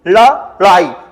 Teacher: जैसे हमने लिखा दोस्तों लड़ाई, तो आप यहां पर थोड़ा सा रुकिएगा, स्टॉप लीजिएगा, लड़ाई। तो जब आप लड़ाई बोलेंगे ना तो जीभ जो होगी ऊपर टकरा के झटके के साथ नीचे आएगी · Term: उत्क्षिप्त व्यंजन